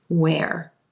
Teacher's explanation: They both have the as in red vowel sound going into the Where, where. And you don't hear that H at all in W-H-E-R-E